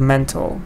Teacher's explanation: Stress is on the first part, and it's an adjective, mental.